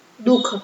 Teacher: જોવ દુઃખ આપણે બોલે દુઃખ ખહ દુહ એ બોલીએ નથી બોલતા અહીંયા આપણે વિસર્ગ છે ખાલી નામનો છે પણ એમાં ઉચ્ચારણ થાતું નથી